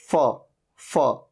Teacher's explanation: जिसमें ऊपर के दांत नीचे के लिप पे टच हो रहे थे